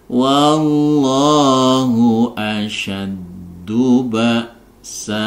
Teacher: Ingat ketika kita berwaqaf di sini ya, berwaqaf di sini, maka bacaan fathatain ya ini akan berubah menjadi fathah dipanjangkan 2 harokat, sehingga cara membacanya menjadi wallahu asyaddu ba'sa, 1 ayunan, asyaddu ba'sa.